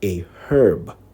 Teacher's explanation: in many british accents the h in herb is pronounced